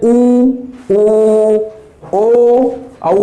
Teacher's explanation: वृत्ताकार में जब हम बोलते हैं तो उनका हमारा जो ओष्ठ है ये गोल हो जाता है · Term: वृत्ताकार स्वर